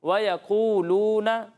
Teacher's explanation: یہاں قاف جو ہے وہ پر ہے